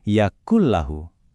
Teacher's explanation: Bunyi n pada yakun itu langsung masuk ke lam, seolah-olah huruf nun itu enggak pernah ada. Hasilnya jadi yakul lahu. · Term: idgham bilagunnah